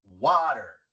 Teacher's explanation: La primera sílaba es la acentuada. Water. Y como la t viene antes de la sílaba no acentuada y entre dos vocales, la a y la e, se pronuncia como r en español. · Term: sílaba acentuada